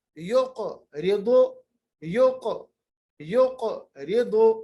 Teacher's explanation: تو قاف کا مخرج, زبان کا آخری حصہ, اقصی لسان, جبکہ اوپر کے تالو کے ساتھ مل جائے گا.